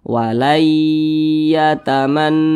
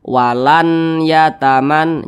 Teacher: huruf nunnya ini dia dileburkan, dimasukkan ke huruf ya. Nah, jadi jangan dibaca walan yataman, jangan, tapi langsung dimasukkan ke huruf ya. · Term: idgham bi gunnah